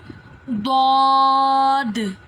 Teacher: جو ضاد ہے، یہ زبان کی کروٹ اور اوپر کی داڑھوں کی جڑ سے ادا ہوتا ہے۔ اس کا لقب حرف حافیہ ہے، کروٹ کو حافہ بولتے ہیں۔